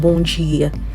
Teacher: if you see a D followed by an I, you're going to get a J sound, okay? That's why we get bom dia.